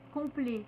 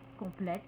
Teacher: Enfin, troisième cas, quand on a un adjectif qui se termine par ET, prononcé E, c'est-à-dire qu'on n'entend pas le T, on ne prononce pas le T, on va écrire l'accent grave, ajouter le E et dans ce cas prononcer le T. Exemple, complet, complète, secret, secrète.